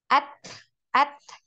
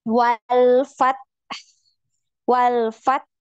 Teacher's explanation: Jadi huruf ta ini tertahan suaranya, kemudian ada hamas ya sama seperti huruf kaf